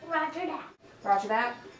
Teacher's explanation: This next scene demonstrates an example of stopping. The voiced fricative th is replaced with a voiceless stop t.